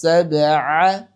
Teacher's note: মধ্যম কলকলা কলকলায় উস্তা অর্থাৎ মিডিয়াম মাঝামাঝি কলকলা করব।